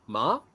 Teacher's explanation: When I did the rising tone, so ma, that's hemp.